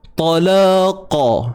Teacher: La dua harakat. Kemudian qa tebal, pangkal lidah naik, isti'la.